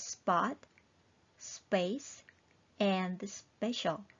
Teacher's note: The P sound right after S makes this B sound in English.